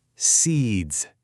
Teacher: You can practically feel that zzz vibration, can't you?